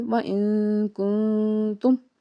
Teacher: نون ساکن کے بعد اخفا کا قاعدہ ہے، تو یہاں پہ اخفا کریں گے یعنی کہ آواز ناک میں چھپائیں گے